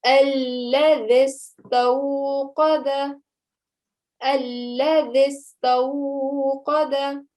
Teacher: you would have noticed that I eliminated the alif and the ya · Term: wasl